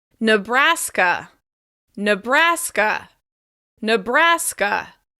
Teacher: Nebraska is stressed on the second syllable